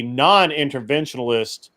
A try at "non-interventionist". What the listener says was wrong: It's not pronounced non-interventionalist. It's pronounced non-interventionist.